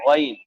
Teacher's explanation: آخری حلق، آخری حلق سے ادا ہوتا ہے غین، اس پر اگر آپ دھیان نہ دیں تو گاف ادا کر سکتے ہیں غین، اس کو گاف نہ پڑھتے ہوئے غین پڑھنا ہے، غین۔